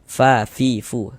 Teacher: ketika mengucapkan huruf fa itu ada nafas yang mengalir. Fa fi karena huruf fa merupakan salah satu huruf yang memiliki sifat hams.